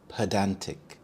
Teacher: The stress is on the second syllable dan